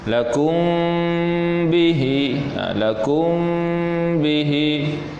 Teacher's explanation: Kita dengung tu maknanya bibir kita itu tidak begitu rapat dan tidak terbuka dak, maknanya betul sentuh je. Ataupun setengah ulama sebut kalau terus kita dengung tu pada makhraj mim tertutup pun diharuskan, tak jadi masalah ya. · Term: ikhfa syafawi